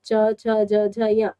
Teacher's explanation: आपकी जीभ का दांतों के ऊपरी भाग पर लगने से च वर्ग का या फिर च वर्ग के सारे वर्णों का उच्चारण होता है।